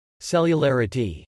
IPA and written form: sɛjəlɛɹəti (cellularity)